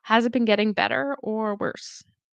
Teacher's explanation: So it rises slightly on better, falls on worse